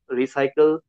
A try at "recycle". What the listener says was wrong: I notice in Indian English, I notice you're kind of rolling your R, like recycle. That happens when you kind of bounce your tongue off of the roof of your mouth.